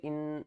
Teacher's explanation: نون مشدد ہے، گھنا کر کے پڑھیں گے